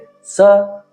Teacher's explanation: ಗಮನಿಸಿ ಶ ಎನ್ನುವಂತಹ ವ್ಯಂಜನವನ್ನ ನಾಲಿಗೆಯ ತುದಿಯಿಂದ ಹೇಳುತ್ತೇವೆ ಷ ನಾಲಿಗೆಯನ್ನ ಮಡಿಸಿ ಹೇಳುತ್ತೇವೆ ಸ ನಾಲಿಗೆಯನ್ನ ಮಡಿಸದೆ ನೇರವಾಗಿ ಇಟ್ಟು ಹೇಳುವಂತಹ ಅಕ್ಷರ